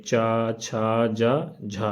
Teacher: निःश्वास क्षण भर के लिए अवरुद्ध होकर घर्षण के साथ निकलते हैं, तो उनसे उच्चरित व्यंजनों को स्पर्श संघर्षी व्यंजन कहते हैं